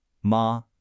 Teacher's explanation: mother is of course that high flat first tone